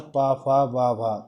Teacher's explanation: तो देखो हमारी जीभ का कहीं स्पर्श नहीं हो रहा है। इस वर्ग को बोलने के लिए हमें सिर्फ क्या चाहिए कि ओंठों से आवश्यकता हो रही है कि हम देखो पा बोलेंगे तो पा हमारे क्या ओंठ चल रहे हैं, और ये फा बोलेंगे तब भी हमें ओठ चल रहे हैं, तो ये हमारा कौन सा होगा, ओष्ठ।